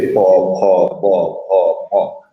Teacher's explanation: ওষ্ঠধ্বনি অর্থাৎ প বর্গীয় যে ধ্বনি আছে, যে প, খ, ব, খ, ম, তো এইটা যে ঠোঁট যে লাগতে হবে, দুই ঠোঁট লেগে উচ্চারণ হয়